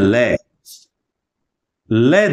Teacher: उस समय श्वास वायु जीवा के दोनों बगल से दोनों साइड से श्वास वायु बाहर निकलती है इसलिए इसे पार्श्विक व्यंजन कहा जाता है यानी जिहुआ के पार्श्व भाग से बगल